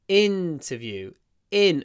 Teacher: so the stress is on the in at the beginning